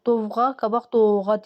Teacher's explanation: Sonra tərkibində ov, öv hərf birləşmələr olanda da dovğa qabaq doğa deyirdilər. V düşürdü, o uzanırdı.